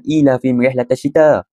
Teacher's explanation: mim itu perlu dibaca jelas tanpa dengung